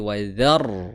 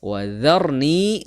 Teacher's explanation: Dzar, ro-nya sukun, kemudian huruf sebelum ro itu berharokat fathah, maka ro-nya itu dibaca dengan tafkhim atau tebal. Jadi bukan wadhar, tapi wadhar tebal ro-nya ya, karena ro sukun sebelumnya huruf yang berharokat fathah.